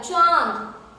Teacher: जो हवा होती है वो नाक और मुंह दोनों से निकलती है